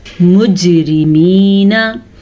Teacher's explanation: जीम पे कलकला है, जैसा कि दाल पे कलकला था, जीम पे भी कलकला है, क्योंकि जीम भी हुरूफ कलकला में शामिल है।